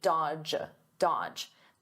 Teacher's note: the D is silent, the middle D